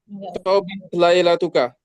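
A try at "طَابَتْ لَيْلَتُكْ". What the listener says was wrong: Tobat lailatuk. Bacanya disukunkan belakangnya.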